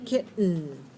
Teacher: our tongue does not move it stays on the gum Ridge